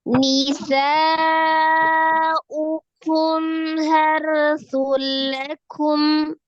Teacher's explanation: Berarti sun jadi sul langsung di lam, tapi tidak disertai dengan dengung. Jangan didengungkan begitu ya. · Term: idgham bila gunnah